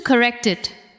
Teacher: The final sound of correct connects to it, right? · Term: linking